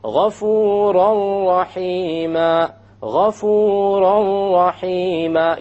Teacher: You don't hear an N sound because you drop it. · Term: idgham without ghunna